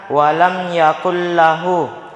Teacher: Jadi cara membacanya melebur masuk tanpa dengung. Jadi jangan didengungkan. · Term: idgham bila gunnah